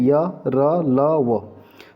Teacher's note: उच्चारण में यहां पर कंपन भी महसूस हो रहा है तो यह आपके सघोष भी है